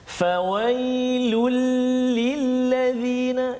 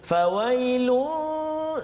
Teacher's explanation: Iaitu penekanan dia pada huruf lam, iaitu tanwin baris depan tanwin itu bagi dua di hadapan bertemu dengan lam. Itu tanwin bertemu dengan lam. Maka kat situ kita tak boleh dengung. Kerana nama hukum dia idgham bila gunnah.